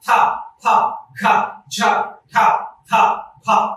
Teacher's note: నిశ్వాస వాయు ప్రమాణం ఎక్కువగా ఉండే వాటిని మహాప్రాణులు అని పిలవడం జరుగుతుంది